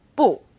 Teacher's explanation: When used on its own, 不 is fourth tone · into some language points we have a tone alert for buu when used on its own buu is fourth tone